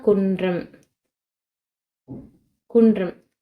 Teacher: நாவின் நுனி வந்து மேல்வாய் அன்னத்தோட முன்பகுதியை தொடுது